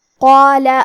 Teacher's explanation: کلمت قالا میں حرف القاف کی ادائیگی زبان کی جڑ اور تالو کے نرم حصے سے ہے. قاف حروف تفخیم میں سے ہے تو ہم یہ حرف کو موٹی آواز میں پڑھیں گے کیونکہ اس کے بعد مد الف ہے